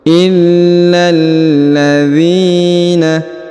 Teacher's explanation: huruf dzi dipanjangkan dua harakat karena di depannya terdapat Ya Sukun